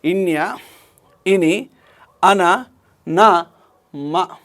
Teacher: అంటే ఏం లేదండి నాసిక అంతర్భాగము నుండి శ్వాస నిర్గమించడాన్ని అనునాసిక ప్రయత్నము అంటాము. నాసిక అంతర్భాగం నుంచి శ్వాస నిర్గమించినప్పుడు పుట్టేటువంటి ధ్వనులను అనునాసికాలు అంటారు.